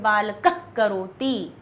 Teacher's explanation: विसर्ग के बाद अगर क हो ख हो तो जो विसर्ग है वो आधा बोला जाता है। जैसे यहां लिखा हुआ है बालकः करोति, बालक करता है, तो इसको हम पूरा विसर्ग ना बोल के हम कहते हैं बालकः करोति। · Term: जिह्वा मूल